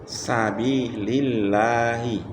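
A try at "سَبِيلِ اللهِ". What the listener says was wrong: Lagi, B-nya panjang. Sabilillahi.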